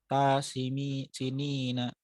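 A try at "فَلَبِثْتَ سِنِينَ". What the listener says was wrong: Taknya itu ritmenya kepanjangan. Jadi falabith tasinina gitu. Jadi harus cepat.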